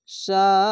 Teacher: এটি চার আলিফ টেনে পড়তে হবে। এর নাম হচ্ছে মাদ্দে লাজিম, চার আলিফ টেনে পড়তে হবে।